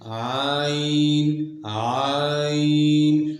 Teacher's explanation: عین کے ادا کرتے وقت آواز اپنے مخرج میں ایسے قوت کے ساتھ ٹھہرتی ہے کہ اس کے اثر سے سانس کا جاری رہنا بند ہو جاتا ہے اور آواز میں بلندی پائی جاتی ہے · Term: جہر